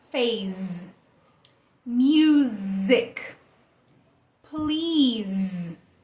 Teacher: Então a letra S saiu com o som Z